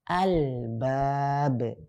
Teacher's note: Ba dia termasuk huruf Al-Qamariyah, sehingga cara membaca alif lam Qamariyah yang bertemu dengan huruf ba, yang setelahnya huruf ba, yaitu lamnya dibaca dengan lam sukunnya dibaca dengan jelas, atau bahasanya dibaca izhar